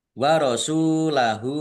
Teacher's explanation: Lam fathah berdiri mad thobi'i panjang dua harakat. Warasulahu sin domah wawu sukun mad thobi'i dibaca panjang dua harakat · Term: mat tobi'i